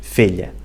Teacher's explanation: a palavra fila e filha são palavras diferentes mas nas ilhas ficam as duas filha